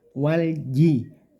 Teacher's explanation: punggung lidahnya ditempelkan di langit-langit mulut walji diusahakan seminimal mungkin anginnya yang keluar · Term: huruf Jim